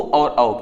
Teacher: ओ और औका उच्चारण क्या हो जाएगा? कंठ प्लस ओष्ठ से हो जाएगा। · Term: कंठोष्ठम